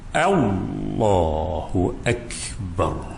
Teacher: Tuan-tuan muslimin dan muslimat yang dirahmati, agak susah sebab lam di situ kena baca dengan tafkhim. Lam pada kalimah Allah kena baca dengan tafkhim, artinya kena baca dengan tebal.